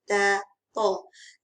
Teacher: Ta di hujung lidah. Hujung gigi depan. Lidah, hujung lidah diletakkan di bahagian gigi hadapan.